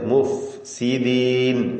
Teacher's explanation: താഴെ ചുണ്ടിന്റെ മധ്യ മേലെ മുൻപല്ലുമാണ് ഫിന്റെ മഹ്റജ് മുഫ് സീദീൻ ഇതുവരെയായി തുടക്കം മുതൽ നാം പരിശോധിച്ചാൽ എണ്ണപ്പെട്ട തഫ്ഹീമിന്റെ ഹർഫുകൾ ഒഴിച്ച് · മുഫ് എന്ന ഫായിന്റെ ഉച്ചാരണം ശ്രദ്ധിക്കുക. താഴെ ചുണ്ടിന്റെ മധ്യവും മേലെ മുൻപല്ലുമാണ് ഫായിന്റെ മഖ്റജ്